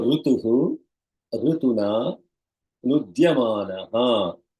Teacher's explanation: Rutuhu, Rutuna, Visarga followed by the Ru, which is the vowel, introduces the consonant R, that is the sandhi rule.